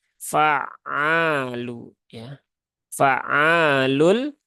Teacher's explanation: ainnya ditekan sedikit ya tanpa berlebihan kemudian ada Alif di sini Alif setelah fathah maka ainnya dipanjangkan dua harakat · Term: dua harokat